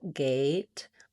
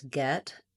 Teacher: A is sliding and tense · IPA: /eɪ/